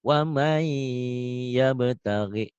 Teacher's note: kalau nun mati ketemu iya, berarti bunyi N-nya hilang sekarang. Melebur ke Y. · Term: idgham bigunah